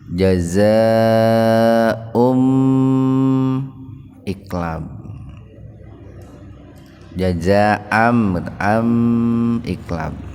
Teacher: Fathatain ketemu dengan ba, jadi dibacanya itu terbalik lah, kira-kira bunyinya itu M itu. Tahan 2 ketukan. Biasanya oleh penulis Al-Quran dibubuhi huruf mim kecil, itu ditandai huruf mim kecil.